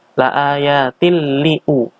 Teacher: Yaitu di sini ada tanwin bertemu dengan huruf lam. Idgham bila gunnah, tanpa dengung, memasukkan tanpa dengung.